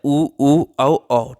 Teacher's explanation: उच्चारण करने पर होठों का आकार गोल हो जाना, ठीक है। वृत्ताकार में उच्चारण करने पर होठों का आकार गोल हो जाना